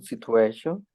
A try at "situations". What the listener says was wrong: Remember to pronounce the final words, final endings, situations, the S, situations.